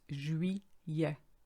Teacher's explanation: So there's no L sound, it's juillet.